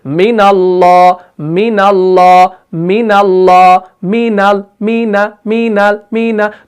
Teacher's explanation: तो नून को हमने जल्दी से अदा किया, हमने नहीं किया मिन अल्लाह, तो हमने नून को फिर तजदीद बना दिया, हालांकि वहां पर तजदीद नहीं है। तो हमने नून को जल्दी से अदा किया, तो ये जो गुन्ना हमने यहां पर किया इसको हम गुन्नाए आनी कहते हैं, जिसकी मिकदार कोई नहीं होती, इसको जल्दी से अदा करना होता है।